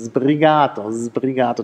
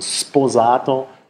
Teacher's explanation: das S wird stimmhaft, wenn der nächste Laut stimmhaft ist. Genauso würde ein S stimmlos, wenn der nächste Laut stimmlos ist. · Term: regressive Stimmhaftigkeitsassimilation